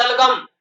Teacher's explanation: इसका उच्चारण तालु से होता है इसलिए इसको तालव्य से कहते हैं